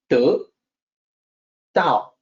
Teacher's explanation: The unaspirated T is supposed to sound like D, the D sound.